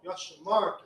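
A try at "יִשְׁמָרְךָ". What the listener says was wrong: There's no Yah there.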